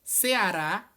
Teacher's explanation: olha como Rá é o mais forte, tem acento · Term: oxítonas